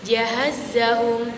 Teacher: tengah lidah dengan langit-langit atas bagian tengah ada huruf jim, ya, dan sin.